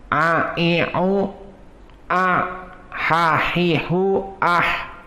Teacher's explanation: Maka sifat dari harf ain atau makhrajnya adalah dia dari al-halq, maka dia bukan adna dan dia bukan aqsa, tetapi wastul halq. Hakada a i u a ha hi hu ah, maka dua makhraj ha dan a berdekatan.